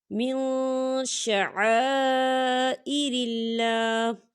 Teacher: إِنَّ الصَّفَا وَالْمَرْوَةَ، إِنَّ الصَّفَا وَالْمَرْوَةَ من شعائر الله، من شعائر الله، من نون ساکن ہے اور نون ساکن کے بعد شین آ رہا ہے، اور شین جو ہے اکفا کا ورڈ ہے، تو یہاں پر اکفا ہوگا، ہم نون ساکن کی آواز کو ناک میں چھپائیں گے